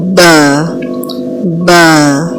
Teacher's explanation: با کا مخرج ہے، آپ کی ہونٹوں کے تر والے اندر والے حصے آپس میں ملے تو با